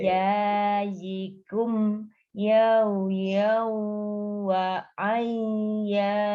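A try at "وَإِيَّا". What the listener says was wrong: Kata terakhir hanya double, tidak ditahan. Wa ya, tidak wa ya.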